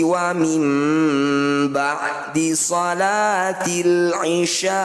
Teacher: bacanya bunyi nun sukun dengungkan dua harakat ketika dengung posisi bibir rapat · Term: bacaan iqlab